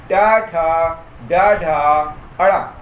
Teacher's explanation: ये पांचों वर्ण ट वर्ग के कहलाते हैं और ये मूर्धा से उच्चारित होते हैं।